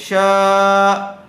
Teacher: شا شین الف زبر، شا زبر والے حرف کے بعد کیا آیا ہوا ہے؟ الف مدہ آیا ہوا ہے، اس لیے اس کو کھینچ کر پڑھیں گے